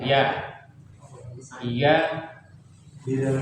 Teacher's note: Makhrajnya di tengah lidah, menempel pada langit-langit atas